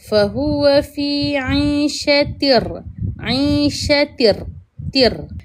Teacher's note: idgham bila iaitu kita kena masukkan bunyi ra ini ke dalam tanwin ta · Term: idgham bila khunnah